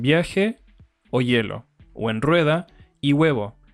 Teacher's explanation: de la vocal por ejemplo en viaje es bi I a como la i y la a se encuentran dentro de la misma sílaba la i lo que hace es reducir su duración al máximo transformándose en una semiconsonante